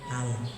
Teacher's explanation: Ujung lidah mengenai langit-langit di atas gusi gigi seri atas. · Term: lam sukun